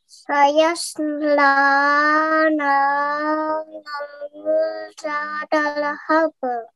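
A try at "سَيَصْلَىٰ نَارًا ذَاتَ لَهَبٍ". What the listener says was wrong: Okay, well done. Mashallah, very nicely recited.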